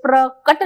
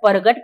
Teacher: हमारे लिए जो क है वो ग में बदल रहा है इसलिए प्रकट ना बोलकर प्रगट कहा जाता है